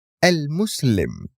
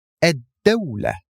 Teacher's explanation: But if you notice the examples that I gave you, al-Muslim and ad-dawla, in the first noun we pronounced the full al, but in the second one we pronounced only the alif of al, and we skipped the lam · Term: solar letters